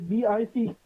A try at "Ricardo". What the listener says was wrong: Ricardo. You roll the tongue. Ricardo. No, it's a rolling R.